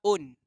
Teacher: Nun ni asalnya bunyi dia ialah un. Kalau kita sebutan dalam izhar un, jelas bunyi nun